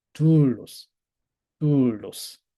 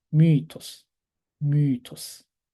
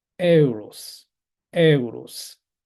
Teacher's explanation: 근데 두 번째 모음에 붙어 있어서 헷갈릴 수도 있는데 피치 자체는 첫 번째 모음을 높입니다. 첫 번째 모라를 높이는 거예요. 그래서 분명하게 이건 하강 피치입니다.